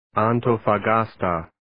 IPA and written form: ,ɑːntoʊfə'gɑːstə (Antofagasta)